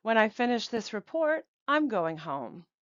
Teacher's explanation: You can hear that before the comma, we go up a little bit and then at the end of the sentence, the inonation goes down.